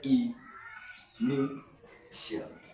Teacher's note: we have 1, 2, 3, and it's stressed at the second syllable.